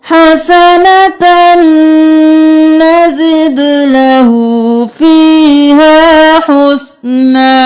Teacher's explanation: ومن يقترف حسنة، یہاں پر اس تنوین کو نہیں پڑھیں گے، تا کو نون کے ساتھ ملائیں گے غنہ کرتے ہوئے